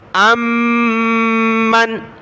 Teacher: حمزہ کو میم کے ساتھ ملا، میم کو نون کے ساتھ، میم مشدد ہے تو غنہ ہوگا